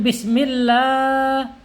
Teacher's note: Dilihat sini ada fathah yang berdiri ya, fathah berdiri. Ini bacaannya mad tabi'i atau mad asli ya, panjangnya 2 harokat atau 2 ketukan atau 1 alif